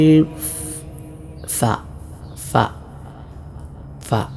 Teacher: മേലെ മുൻപല്ലിൻ്റെ താഴ്ഭാഗം താഴെ ചുണ്ടിൻ്റെ പള്ളയിൽ തട്ടുന്ന വിധമാണല്ലോ ഫ ഉച്ചരിക്കേണ്ടത്.